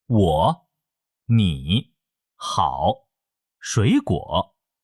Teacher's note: 这个声调需要你的声音先降到一个比较低的位置，然后再升起来。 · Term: 第三声